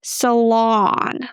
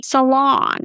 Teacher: So a lot of people are trying to pronounce the U sound, but we need to pronounce the S with the schwa, and then lawn as in lawn.